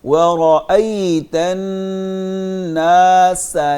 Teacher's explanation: سین پہ سیٹی کی آواز نکالیں گے، اس کو ثا اس کو ڈھیلا سا کر کے ثا کی طرح نہیں پڑھیں گے